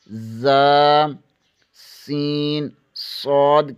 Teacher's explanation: زبان کی نوک ثنائے سفلی یعنی نیچے والے 2 دانتوں سے لگے تو زا، سین، صاد ادا ہوتے ہیں